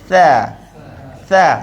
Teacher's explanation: Kalau kita sekadar keluar nanti jadi tebal, contohnya tha tebal. Kita nak keluar dan senyum sedikit. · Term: huruf tha